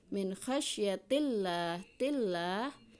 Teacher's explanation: Min khasyatillah, tillah ini lam jalalah tarqiq tipis karena sebelum lam jalalah harakatnya kasrah, jadi tipis